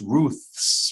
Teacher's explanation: you've gone from a th which is your tongue between your teeth to an S where you're pulling your tongue back so it's Ruth's while you're still making the same sound Ruth's